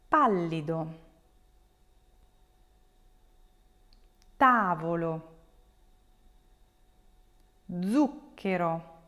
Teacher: the stress will fall on the third to last syllable